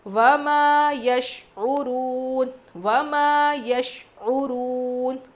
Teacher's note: واؤ مدہ ہے تو مجہول نہیں پڑھیں گے، معروف پڑھیں گے